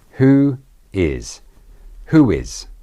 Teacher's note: Notice the intrusive w.